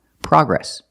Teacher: We don't say progress. The American pronunciation is progress, with the short ah sound, like hot and stop.